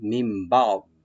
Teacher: দুইটা ঠোঁট বন্ধ হয়ে যাবে